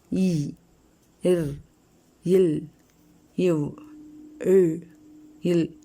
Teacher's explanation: இந்த இடையின எழுத்துக்கள் கழுத்திலிருந்து பிறக்கிறது